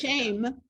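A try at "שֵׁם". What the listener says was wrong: It doesn't need the yud. Because it's really not shame. It's shame. It's not, it's a softer sound.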